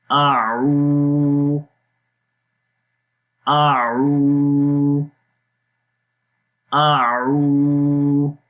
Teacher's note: اعو، آ کی آواز سمپل رہے گی، آ لمبا نہیں کریں گے۔ عو، عین کی آواز گلے کے درمیان والے حصے سے اور لمبا بھی کریں گے